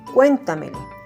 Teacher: Su mayor fuerza de voz se encuentra en la sílaba cuen. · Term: sobresdrújula